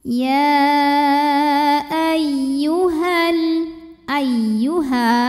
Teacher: Maka ya-nya dipanjangkan boleh 4 boleh 5 harokat, tapi tidak lazim untuk berhenti di ya. · Jadi tidak biasa para qori berhenti di ya-nya ya. Ya ay, huruf ya tasydid cukup dibaca dengan nabr, ada intonasi yang kita naikkan. Jadi tidak perlu ditahan. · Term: mad jaiz munfasil